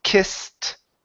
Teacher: sometimes it sounds like a t when the ending of the word is an unvoiced sound like an S